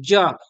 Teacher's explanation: ज का उच्चारण स्थान तालू ज बोलिएगा तो जीभ जा के आपके